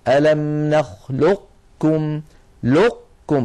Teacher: فيكون اغلاق المخرج على قاف ساكنه من غير قلقله ويكون الفتح على كاف متحركه · ومن العرب من كان يبقي هذه القاف من أيضا من غير قلقلة كما ذكرنا ويدغمها في الكاف إدغاما ناقصا، هكذا ألم نخلقكم لقكم، فيكون إغلاق المخرج على قاف ساكنة من غير قلقلة ويكون الفتح على كاف متحركة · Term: ادغاما ناقصا